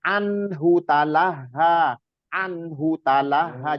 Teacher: Hu-nya jangan sampai panjang ya.